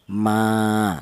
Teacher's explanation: Dibaca mad thobi alasannya ada alif yang didahului huruf yang berharakat fathah. Panjangnya satu alif atau dua harakat atau dua ketukan. · panjangnya 1 alif atau 2 harokat atau 2 ketukan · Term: mad thobi'i, matobi'i